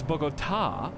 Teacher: emphasis on the last syllable that's why there's an accent mark on it